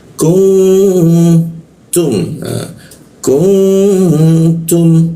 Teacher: Dengungnya itu di huruf ta kita tahan dua ketukannya